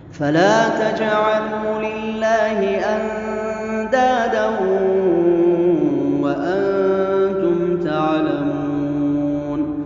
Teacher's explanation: فلا تجعلوا، یہاں مد جو ہے مد طبیعی ہے، واو ساکن سے پہلے پیش ہے، تو یہ مد طبیعی کہلاتی ہے اور اس کو واو مدہ بولا جاتا ہے۔